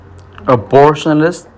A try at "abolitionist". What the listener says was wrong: So there's no R there, okay?